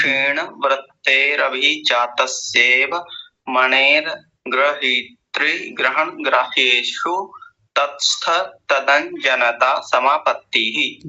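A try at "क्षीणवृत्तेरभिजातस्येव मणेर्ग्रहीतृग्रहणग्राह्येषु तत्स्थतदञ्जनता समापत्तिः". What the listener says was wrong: बहुत ही सुंदर उच्चारण, बहुत बढ़िया। एक दो गलती हुई थी शुरू में, वो ठीक कर ली।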